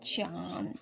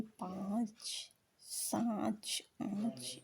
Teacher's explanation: निर्नुनासिक मौखिक स्वर, इसमें केवल मुख का प्रयोग होता है ई, जबकि अनुनासिक स्वर में मुख और नाक दोनों से अनुनासिक स्वर में मुंह और नाक दोनों का प्रयोग होता है